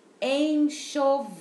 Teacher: Quando eu levo a língua lá para o céu da boca, é o L no final